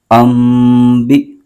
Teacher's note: با کے نیچے زیر ہے اور آگے حمزہ کے اوپر جزم ہے، تو حمزہ کے اوپر جزم ہے، حمزہ ساکنہ ہے، تو حمزہ ساکنہ کو ہمیشہ جھٹکا دے کے پڑھتے ہیں